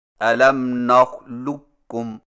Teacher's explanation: قاف کی آواز کو بالکل ختم کر کے صرف ایک کاف مشدد سے پڑھیں، یعنی اس طرح الم نخلقکم، اس کو ادغام تام کہتے ہیں۔